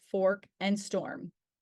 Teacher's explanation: the tongue is mid height and back in the mouth with rounded lips followed by the or sound